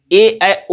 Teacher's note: ए, ओ के उच्चारण में हमारी जिह्वा तालु को स्पर्श तो करती है लेकिन पूर्ण रूप से तालु को स्पर्श नहीं करती है , इसीलिए मतलब समृद्ध स्वरों की अपेक्षा कम स्पर्श करती है, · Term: अर्ध समृद्ध